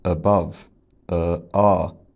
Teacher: He lengthens it, which to me makes it sound like the palm vowel. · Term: SSB strut vowel